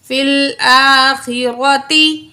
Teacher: را کے اوپر زبر ہے، را کو پر پڑھا جائے گا